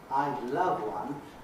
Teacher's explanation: the final pronoun one following the verb love has to be said quite quickly quite smoothly connected to the previous word because it's it's a political unit loved one and they can't